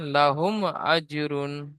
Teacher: মিমকে বিনা গুন্নায় জাহির করে তাড়াতাড়ি পড়তে হবে। একে ইজহারেশাফাবি বলে।